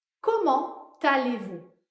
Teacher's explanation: Dans comment allez-vous, on fait la liaison entre comment et aller. On prononce un T.